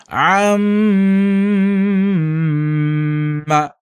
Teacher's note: കൊണ്ട് ഉച്ചരിക്കേണ്ട അക്ഷരമാണ് മീം അതുപോലെ നൂന് ഇവിടെ ഇവിടെ ആ ഒരു രീതി അം എന്ന് പറയുമ്പോൾ നമ്മുടെ മൂക്കിൽ ഒരു ചെറിയൊരു തരിപ്പ് അനുഭവപ്പെടാം